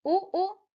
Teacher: इन्हें उच्चारण करते समय हमारा होंठों का आकार गोलाकार हो जाता है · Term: वृत्ताकार स्वर